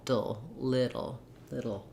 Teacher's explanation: no i don't want a long vowel here not dull but i'm going very quickly from the d to the l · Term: syllabic l